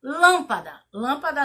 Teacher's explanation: lâmpada ela tem como a sílaba tônica é a antepenúltima · Lâmpada a gente já tá vendo que ela é acentuada. Então, a sílaba mais forte de lâmpada é lã. Então, lâmpada, ela tem como a sílaba tônica a antepenúltima. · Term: proparoxítona